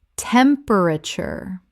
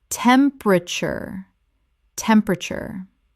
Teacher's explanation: This is three syllables in natural speech. The middle syllable is swallowed.